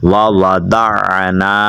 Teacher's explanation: ضاد کو عین کے ساتھ ملانا ہے اور عین ادا کرنی ہے